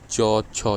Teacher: तालव्य, तालु से रिलेटेड है, उच्चारण स्थान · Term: तालव्य वर्ग